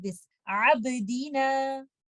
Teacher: ba is in the middle of the word. We will do qalqala sughra